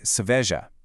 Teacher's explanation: The emphasis is squarely on that second syllable, ve. You say seveja, keeping those first and third syllables much lighter. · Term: stress rule